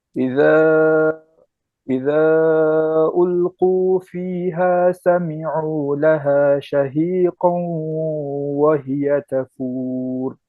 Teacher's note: This specific scenario we're looking at is a merging with a nasal sound. So you have to say shahiqan and read it from your nose